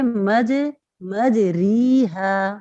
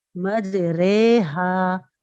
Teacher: Simple الفاظوں میں آپ یہ سمجھ لیجئے، را کو مجہول پڑھنا. مجہول را کیسے ہوتی ہے کہ ہم ری کو رے پڑھیں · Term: امالہ